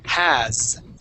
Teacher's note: It's important in this word to make sure that you pronounce that V and then hear that S. Now the S is not going to make an S sound. It would make more of a Z sound.